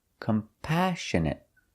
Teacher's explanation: We put the stress on the second syllable, compassionate.